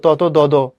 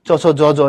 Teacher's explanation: তুমি তো পড়ছো তত দদ, এটা হচ্ছে দাঁতের মধ্যে হয়, চচ জ জ এটা তালুতে হয়। তো যেসব বর্ণের উচ্চারণ তালুতে হয় সেগুলি তালব্য ব্যঞ্জন, বুঝছো কিনা?